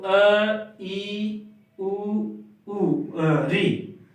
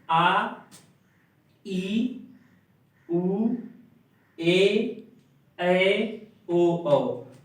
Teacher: ऐसा स्वर जिसके उच्चारण में ह्रस्व से ठीक दोगुना समय लगे, उसे दीर्घ स्वर कहते हैं।